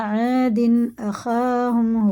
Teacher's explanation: الف سے پہلے زبر ہے، یہ بھی کھڑا زبر کی طرح کھینچ کے پڑھنا ہوتا ہے۔ تنوین کے بعد ہے الف، یہ اظہار کا قاعدہ ہوا، ظاہر کر کے پڑھنا، غنہ اخفا کچھ نہیں ہوگا۔ الف سے پہلے زبر ہے، یہ بھی حرف مدہ ہے، یہ بھی ایک الف کے برابر، ان سب کو ہمیں کھینچ کے پڑھنا کھڑا زبر کی طرح۔